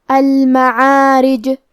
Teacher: اگر ہم یہ کلمہ پہ رکیں گے تو جیم پہ جزم سے رکیں گے، لہذا یہاں جیم کا حکم ہے قلقلہ، اور قلقلہ کا معنی ہے حرف ساکن کو ہلانا، تو ہم جیم کو ہلاتے ہوئے یہ کلمہ کو پڑھیں گے